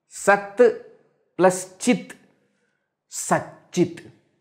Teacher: Ta followed by ch, t also changes to ch.